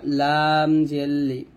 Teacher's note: লাম জিহ্বার আগার কিনারা উপরের মারি দাঁতের সঙ্গে লাগিয়ে পাতলা উচ্চারণ করব, লাম জেল্লি।